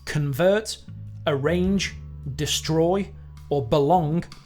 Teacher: an iamb is a pair of syllables where the second syllable is stressed, so it sounds like da-dum.